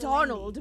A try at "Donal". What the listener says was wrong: There's no D at the end, so it's pronounced Donal. That's the way you're supposed to spell it, which is to say that's the way the Irish spell it.